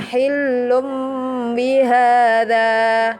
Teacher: menukar dari huruf nun mati menjadi mim. Contohnya huruf iqlab ada 1 yaitu ba.